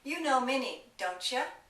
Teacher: When T and Y are combined, for example, don't you, it becomes a CH.